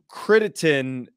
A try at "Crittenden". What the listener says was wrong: It's not a T at the end. Crittenden.